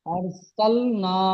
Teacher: র সাকিনের ডান দিকে জাবার এসেছে তাই রকে পুর করে পড়তে হয়